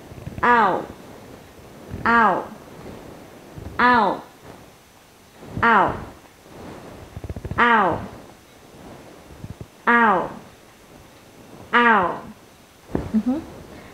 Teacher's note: mình chuyển thành môi hơi tròn và kéo lưỡi về. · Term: âm ao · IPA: /aʊ/